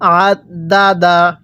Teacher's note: আইনটা পড়ার সময় গলার মধ্যে চাপ দিয়ে পড়তে হবে